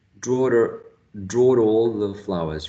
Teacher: we can call this an intrusive R because the word draw ends in a vowel sound. And the following starts basically with the same vowel sound.